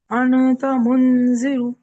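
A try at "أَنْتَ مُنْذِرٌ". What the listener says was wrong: अनता नहीं बोली, बोली। पहले इख्फा की आवाज सीख जाइए, फिर आप प्रोनाउंसिएशन तो कर ही लेंगी बाकी का। आवाज निकालिए और नून की आवाज को नाक में से निकालिए। अगर आसान तरीका समझते हैं तो यूं करिए, जबान को कहीं टच नहीं करना।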